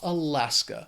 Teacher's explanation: It has 3 syllables. The stress is on that second syllable. That final syllable just has that schwa